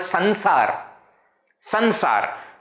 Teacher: That Anusvara's pronunciation happens as na. It is okay to do that in Hindi.